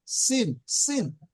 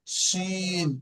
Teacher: দন্তের স দিয়ে পড়বেন তখন সিন, সিন, আর তালবের স দিয়ে পড়লে শিন